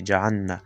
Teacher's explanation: دلته باید لام او نون سره خپل مخرج ته ورسول شي، جلا کړی شي، ادغام ونشي